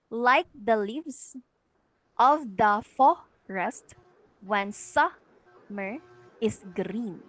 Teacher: The first two syllables are unstressed, and the last syllable is stressed. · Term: anapest